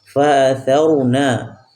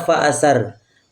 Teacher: Tha itu keluar dari ujung lidah menempel pada ujung gigi seri. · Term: huruf tha